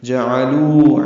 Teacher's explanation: میم ساکن پہ اظہار شفوی ہے، لتغفر لہم، لام کو جلدی پڑھنا ہے، غین پر پڑھنا ہے، اس پہ اظہار ہے، را پر پڑھیں گے، را پر زبر ہے، لتغفر لہم، لام کو جلدی پڑھیں گے، میم ساکن پہ اظہار شفوی ہے۔ جعلو عین وسط حلق سے ادا کریں گے